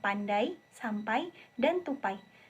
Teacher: Bunyi ini dihasilkan dari vokal depan A yang menggeluncur ke vokal depan tertutup I. Lidah bergerak ke depan dan sedikit naik, tetapi tidak sepenuhnya mencapai posisi vokal I. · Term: diftong AI